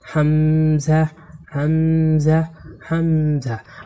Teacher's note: এই হামজা হরফকে কণ্ঠনালীর শুরু থেকে শক্ত করে পড়তে হয়